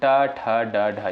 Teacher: ट वर्ग की अगर बात करें तो इसका उच्चारण स्थान कहां से होता है? साथियों ट, ठ, ड, ढ यानी मूर्धा से होता है।